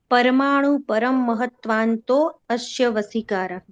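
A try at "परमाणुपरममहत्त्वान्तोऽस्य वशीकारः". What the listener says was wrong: हाँ, तो अंतोष है, अस्य न कहो, नहीं तो फिर अभी जब सूत्र पूछ रहे हैं तो विच्छेद तो करवा नहीं रहे हैं। अंतोष है, ठीक है, पुनः एक बार।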